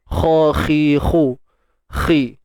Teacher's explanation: Tatta kha baris bawah khi, kita kena tebalkan. Huruf kha tebal selamanya.